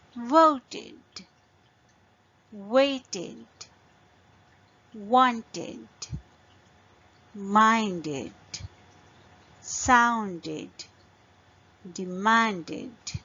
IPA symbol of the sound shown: id